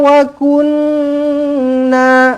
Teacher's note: Nun sabdu wajibul ghunna dengungkan dua harakat